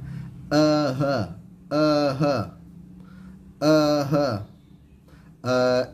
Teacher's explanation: tepat keluar hurufnya adalah pangkal tenggorokan